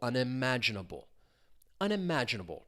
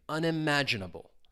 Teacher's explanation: the stress is, again, on that third syllable, unimaginable. And you really do hear that stress syllable, unimaginable.